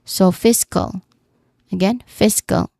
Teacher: The second syllable is unstressed and has a relaxed vowel sound because the primary stress here is on the first syllable, fis. So fiscal.